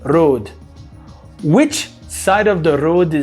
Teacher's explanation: é um R mais vibrado